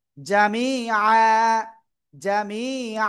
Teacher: উচ্চারণের সময় জামি আন না হয়ে হবে জামি আ